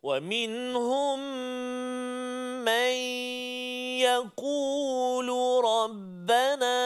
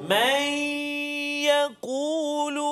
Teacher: nun mati bertemu dengan ya, iaitulah idgham ma'al ghunnah